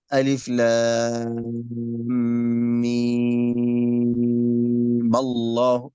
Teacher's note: إذن الميم هنا في ألف لام ميم عند الوصل في سورة آل عمران إما تمد حركتين أو 6 حركات